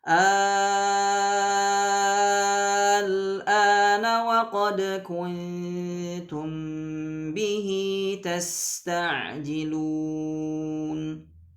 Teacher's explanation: bacaan dengan tul atau isba' tadi adalah 6 harakat. Jadi baca panjang 6 harakat yang pertama tadi, ya.